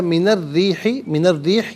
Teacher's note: اچھا، من الریح، من الریح یہ را کے نیچے زیر ہے تو را کو باریک کر کے پڑھیں گے